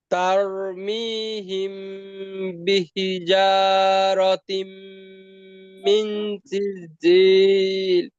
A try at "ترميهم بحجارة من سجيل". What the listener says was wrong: মাশাআল্লাহ, আগের তুলনায় অনেক ভালো হয়েছে। আবার মাঝখানে শব্দটা একটু খেয়াল রাখবো ইনশাল্লাহ।